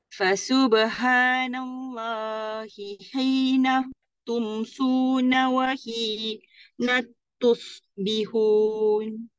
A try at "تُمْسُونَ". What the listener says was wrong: sekali lagi dekat tumsu tu nipiskan dulu tumsuna wahina tusbihun tumsuna nipisin.